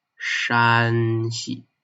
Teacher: So Shanxi is the first tone, flat tone, Shanxi